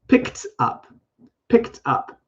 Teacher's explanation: because it ends in a k or x sound, actually is a T sound for the ED. So I don't say picked.